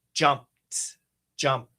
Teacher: Stop sound. Finish with a t.